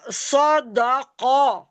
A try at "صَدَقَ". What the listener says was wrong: وقف کریں۔ صدقہ نہیں، پہلے سود کو دال سے ملائیں، پھر دال کو قوف سے ملا کر قوف کو ساکن کریں۔ سود دال زبر، سود، سود ہے نا سود۔ صدقہ، وقف کریں۔ سود دال قوف زبر، دیکھیں سود دال زبر سود ہے نا، سود